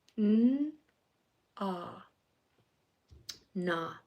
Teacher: that ah sound, which is a little bit deeper than a short O sound at the end of that word